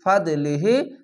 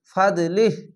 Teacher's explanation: ফাদলিহ, এখানে জিম আছে, জিমের জায়গায় থামা ভালো, তার জন্য শেষ অক্ষরের সাকিন দিয়ে লামের সঙ্গে মিলিয়ে লিহ বলে থেমে যাবেন। ফা দদবার ফাদ, লাম জের লি, ফাদলি, হা খাজের হি, ফাদলিহি, ফাদলিহ।